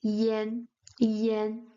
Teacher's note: But since um for their articulation properties when pronounced together it sounds more like yen yen. It's a slightly open A.